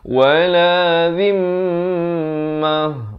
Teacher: Mim sabdu di sini wajibul gunnah. Kadang banyak orang buat kesilapan di sini dia baca wala zimmah.